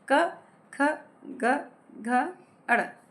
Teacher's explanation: हम बोलेंगे क, ख, ग, घ, अड़। इनका उच्चारण कंठ से होता है।